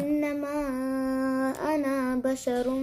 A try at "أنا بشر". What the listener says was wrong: أنا also not stretch أنا not stretching أنا بشر